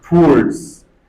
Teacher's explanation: Second pronunciation, O becomes silent and W is pronounced towards.